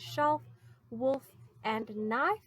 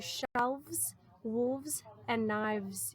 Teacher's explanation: You can hear that V sound that replaces the F.